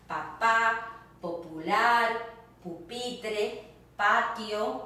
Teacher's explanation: Sounds like the English P without the puff of air coming out. It's a drier sound.